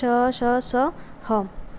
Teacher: संघर्षी व्यंजन क्या होता है, जिन व्यंजनों के वर्णों का उच्चारण करते समय दो उच्चार अवयव इतने निकट आ जाते हैं कि वायु निकासी का मार्ग इतना सकरा हो जाता है कि वायु को बाहर निकलते समय संघर्ष करना पड़ता है, ठीक है। तो उसको हम संघर्षी व्यंजन कहते हैं।